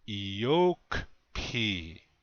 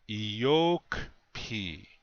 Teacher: you can hear that the accent is on the second syllable.